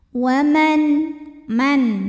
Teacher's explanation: Waman, man, ada hukum izhar halqi sebab nun sukun menghadapi huruf halqi yaitu hamzah, huruf tenggorokan ya. Maka nun sukun dibaca dengan jelas.